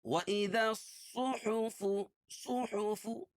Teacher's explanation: صاد کو موٹا پڑھیں گے